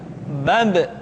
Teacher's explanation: Ketika mati, maka terdengar suara pantulan.